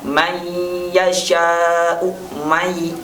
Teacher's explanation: Contoh huruf idgham yang menggunakan gunnah, misalnya may yasha'u, may. Nah, ada nun, sukun bertemu dengan ya, dan itu diidghamkan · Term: bi gunnah